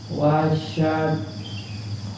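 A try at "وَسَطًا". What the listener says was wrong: Wasyatan. Nah, huruf yang kedua huruf apa itu, Pak? Nah, sa bukan sya. Huruf yang ketiga apa itu? Bukan ta. Berarti to. Sinnya. Sin apa sya itu?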